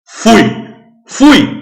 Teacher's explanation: o u é muito mais forte que o i então o u é vogal e o i é semivogal é decrescente